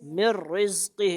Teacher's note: इदगाम बिला गुन्ना होगा क्या मतलब नून नहीं पढ़ेंगे